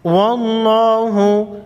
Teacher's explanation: لفظ اللہ سے پہلے حرف پر زبر ہے، لفظ اللہ کے لام کو موٹا پڑھیں گے